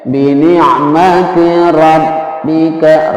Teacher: ra-nya adalah ra tafkhim karena berharokat fathah